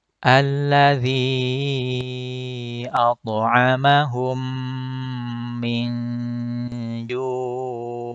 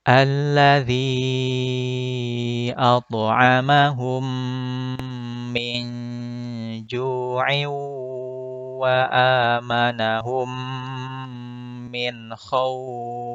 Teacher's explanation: Maka ju-nya bisa dibaca 2, 4, ataupun 6 harokat. Dengan catatan harus konsisten dengan salah satu pilihannya. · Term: mad arid lisukun